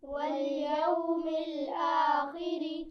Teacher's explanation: خا کو موٹا پڑھتے ہیں لیکن زیر کے ساتھ پڑھتے ہوئے اس طرح موٹا نہیں پڑھا جائے گا جیسے زبر اور پیش کے ساتھ پڑھتے ہیں